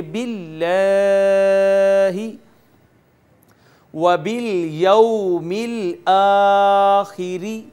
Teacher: ہم نے یہ پڑھا ہوا ہے کہ اگر لفظ اللہ سے پیچھے زیر آ جائے تو اس کو باریک پڑھیں گے، اور اگر زبریہ پیش آئے گی تو اس کو پور کر کے موٹا کر کے پڑھیں گے۔ لفظ اللہ کا ما قبل مکسور ہے، کسرہ ہے، زیر ہے، لہٰذا اس کو باریک کر کے پڑھیں گے